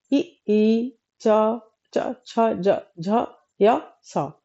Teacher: तालव्य का मतलब होता है तालु। उच्चारण स्थान तालु से होता है इसका।